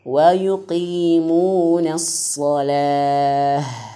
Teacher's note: huruf ha itu harus besar makhrajnya, suaranya, karena dari pangkal tenggorokan